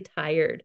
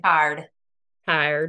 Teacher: I make the full sound, the diphthong. And for you, it's just a straight ah.